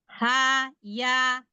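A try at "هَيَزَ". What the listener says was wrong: Zainya lagi. Za. Harus ada z-nya dulu. Za.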